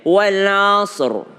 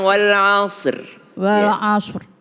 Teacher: ro harus tebal kalau tebal berarti dia agak maju bibirnya